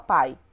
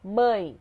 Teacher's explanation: se ele reproduzir totalmente pela boca eu tenho aqui um ditongo oral